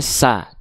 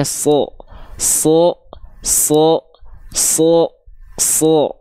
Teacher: ketika dia berharakat fathah dia tidak dibaca dengan vokal A terdengarnya tapi dia dibaca seperti terdengar vokal o condong pada vokal o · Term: huruf yang tebal